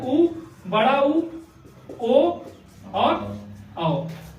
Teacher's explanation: अगर किसी स्वर का उच्चारण करने पे ओष्ठ की आकृति गोल बनी तो वृत्त मुखी, गोल नहीं बने तो अवृत्त मुखी।